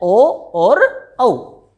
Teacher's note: कंठ और होठ इन दोनों के मिलने से दो वर्ण उत्पन्न होते हैं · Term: कंठोष्ठ